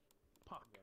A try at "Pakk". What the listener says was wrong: Like puck with an A. Like a long A. Like paw, but with a